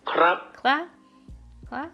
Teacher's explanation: that sounds like a rising tone, but maybe higher than the second tone in Chinese